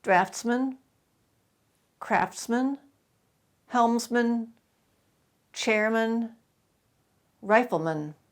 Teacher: there are some man words where that last syllable is always reduced